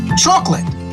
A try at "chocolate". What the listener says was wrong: careful with this pronunciation. You only have 2 syllables right here. Only 2 syllables.